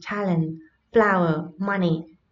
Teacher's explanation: trọng âm nhấn vào âm tiết đầu tiên